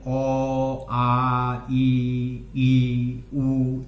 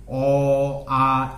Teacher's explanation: এখানে কি হয়, অ, আ এখানে স্বরতন্ত্রের কম্পন ঘটছে, ঘটে কিন্তু সেগুলো আমাদের মুখ দিয়ে নির্গত হচ্ছে, যার ফলে এই সমস্ত স্বরবর্ণ হচ্ছে ঘোষ বর্ণ। স্বরতন্ত্রের কম্পন ঘটিয়ে এইগুলো উচ্চারণ করা হয়